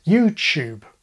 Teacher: we have those who drop the yod, like most Americans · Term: yod coalescence